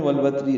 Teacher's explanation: ہے، را پر ہے وقفن، والوتر ملانے کی صورت میں والوتری را باریک پڑھی جائے گی اور جلدی پڑھیں گے